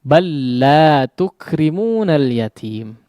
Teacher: dengan memasukkan huruf lam yang pertama kepada huruf lam yang kedua sehingga seolah menjadi bertanda tasydid ya. Huruf yang kedua bertanda tasydid dan huruf yang pertama seolah tidak dianggap. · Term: diidghamkan